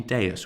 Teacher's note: we have 2 vowels right next to each other that aren't pronounced together. They're not a diphthong, and so that E must be short.